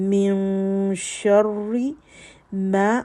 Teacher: را کے اوپر شد ہے تو اس میں تکرار ہے صفت میں